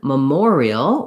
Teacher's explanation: in memorial, we have a clear or vowel because the second syllable is stressed. So where we have a stressed syllable, we tend to have a clear vowel.